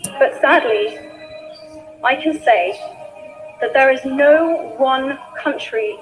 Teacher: the speaker has used short rising tone intonation on the word, but sadly